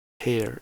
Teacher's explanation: Basically, you just emit air. Like when you take, for example, the word hair in English, you have this aspiration at the start. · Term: glottal fricative